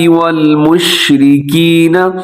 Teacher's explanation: شین میں آواز پھیل جاتی ہے